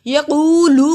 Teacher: یقولو کو لمبا کیا جزم والی واو سے پہلے پیش حروف مد الف کے برابر لمبا ہوگا